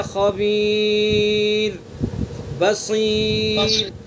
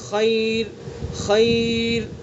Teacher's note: را ساکن، اس سے پہلے یا ساکن، تو اس لیے را کو باریک پڑھیں گے